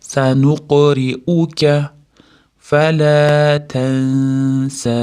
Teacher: s ingichka harf bo'lgani uchun ixfosini ham ingichka beramiz. U ixfoda ozgina g'unnasi ham bor, ya'ni 2-3 deguncha g'unna qilamiz, keyin sni cho'zib to'xtaymiz.